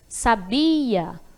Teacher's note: coloquei mais intensidade na sílaba Be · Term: sílaba tônica